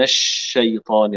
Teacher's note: الشين من وسط اللسان وسط الحنك الاعلى